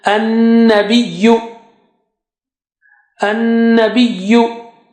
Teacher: Noon has shadda there, so it will be having gunna.